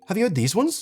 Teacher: If you're American, chances are your voice rises towards the end.